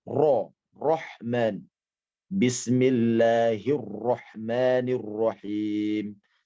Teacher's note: roh di dalam bahasa Arab sama seperti r nya kita dia bergetar